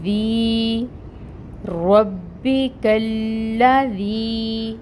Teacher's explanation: مد ہو رہی ہے اور اس کو ہم 2 کاؤنٹس لمبا پڑھیں گے۔ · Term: یائے مد